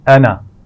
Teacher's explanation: انا یہ لفظ قرآن مجید میں جہاں بھی آئے گا اس کا الف نہیں پڑھا جائے گا. الف اس کا لکھنے میں تو آئے گا لیکن ہم اس کو کھینچ کر نہیں پڑھیں گے. یہ والا الف پڑھا نہیں جائے گا تو ہم اس کو پڑھیں گے انا.